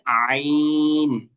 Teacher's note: এই আইনটা উচ্চারণ করতে হয় হলো গলার মাঝখান থেকে